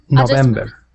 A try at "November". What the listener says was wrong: November. I'm not sure if I didn't hear this correctly, but I was hearing you say the V like a W, November.